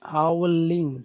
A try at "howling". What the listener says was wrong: Not ling, ling, ling. Very small. Howling, howling. Don't pay attention to that ing. It's not important. Howling. Howl. Say howl. Ing. Howling. Like that. Howling.